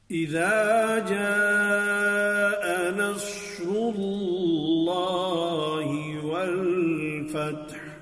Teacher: تا کو ساکن کر کے پڑھیں گے اور تا میں معمولی سی ہمس ہوگی، اور ہا پر پھر وقف کریں گے، اور ہا میں بھی ہمس جو ہے وہ اس کی گویا کہ سانس کی پستی کے ساتھ آواز جاری رہے گی.